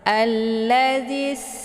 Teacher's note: Jadi sinnya itu sifatnya safir. Jadi anginnya itu lebih kuat kalau dibandingkan dengan yang sifatnya hamas